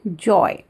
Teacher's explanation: Now this is the mixture of plosive and fricative. मतलब पहले हम जब अपने मुंह से आवाज़ निकाल रहे हैं तो पहले हम एयर को ब्लॉक करते हैं, फिर धीरे से रिलीज कर रहे हैं. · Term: affricates